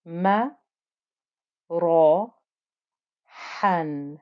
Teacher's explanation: ra with fatha is thick and heavy